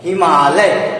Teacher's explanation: आ ध्वनि का जो खिंचाव है वो बता रहा है कि दीर्घ संधि का एक उदाहरण है